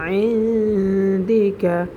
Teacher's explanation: নুন সাকিনের বামে ইকফার 15 হরফ থেকে একটি হরফ পেয়েছি দাল, সেজন্য আমরা এখানে গুন্নার সহিত নাকের ভিতর লুকিয়ে পড়ব